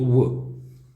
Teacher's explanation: दंतोष्ठमध्ये स्वर कोणता येत नाही, व्यंजनामध्ये येतो, दंतोष्ठमध्ये व येतो. दंतोष्ठ म्हणजे दाताचा आणि ओठांचा वापर करून ज्याचा उच्चार केला जातो तो येतो व